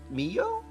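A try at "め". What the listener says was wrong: It is meh. The second one is not o, though.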